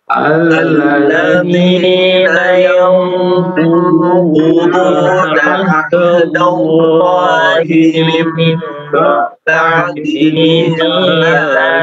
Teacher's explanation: Baik, qaf, dhad ya dibaca tebal, kemudian yang quduna ikhfanya agak sedikit naik ke atas ya. Yang quduna karena nun berhadapan dengan huruf isti'la ya, yaitu qaf. Jadi ikhfanya agak sedikit terangkat. Tidak lurus.